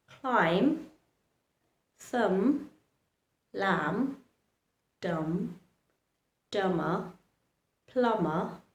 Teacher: Notice I did not pronounce the letter B. I didn't pronounce them at all. I stopped at the letter M. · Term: remain silent